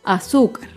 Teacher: Azúcar es una palabra grave y se acentúa en la penúltima sílaba. Azúcar. Las palabras graves no llevan tilde si terminan en vocal A, E, I, O, U y en las consonantes N, S.